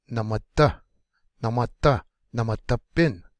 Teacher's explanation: Drop down soft, just a tad, and then kick the last one hard.